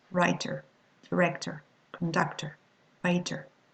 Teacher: the final R is not pronounced